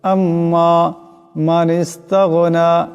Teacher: আম্মাস্তা হামজা মিম জবর আম্ম মিম আলিফ জবর মা আম্মা এখানে মিম মুসাদ্দা এক পরিমাণ গুণনা হবে